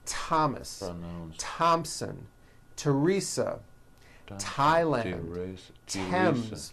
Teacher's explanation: although these next words and names are spelled with a th they are pronounced as if they were spelled with a normal T